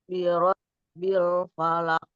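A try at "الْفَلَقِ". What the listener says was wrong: kol-kolahnya Bu di akhir jangan lupa. Bil falaq. lebih diperjelas lagi, Bu. falaq.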